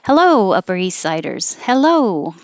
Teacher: the higher and longer you stretch it the more friendly it sounds